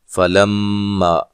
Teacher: فَلَمَّا میم مشدد پہ غنہ ضروری ہے